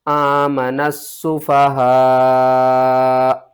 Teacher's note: جب آپ یہاں پر وقف کریں گے تو حمزہ ساکن ہوگی، جھٹکے کے ساتھ پڑھیں گے۔ · مد متصل ہے، بڑی مد اس کو ہم قرآن پاک میں کہتے ہیں، اس کو 5 الف کے برابر کھینچ کر پڑھیں گے۔ الف اور لام کو آپ نے چھوڑ دینا ہے۔